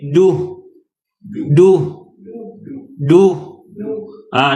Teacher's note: Dia hams, dia ada suara nafas terlepas, tapi jangan lepas semua. Jangan lepas banyak sangat angin.